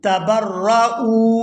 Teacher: یہاں حمزہ کو واو ساکن کے ساتھ ملائیں گے تو کھینچ کر ادا کریں گے. حمزہ واو پیش او.